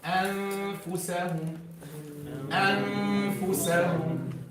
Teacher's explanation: So when you gently touch, look what will happen. Some air will sneak from some space between the teeth and the lip.